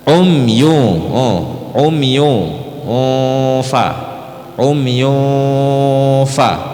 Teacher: Fa pertemuan Gigi atas dengan bibir bawah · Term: ikhfa Hakiki